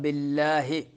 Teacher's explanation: باللہ لفظ اللہ کو باریک پڑھنا ہے